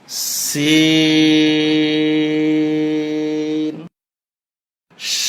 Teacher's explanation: জিহ্বার আগা নিচের দাঁতের আগায় লাগবে।